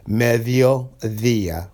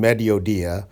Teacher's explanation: d between two vowels you stick the tip of your tongue between your teeth · I'm really sticking my tongue out between my teeth so we're not saying mediodia we want to say meh via